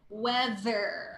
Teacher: the th there is vibrating th don't interchange with the D sound